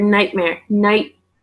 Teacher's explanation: we're not saying the T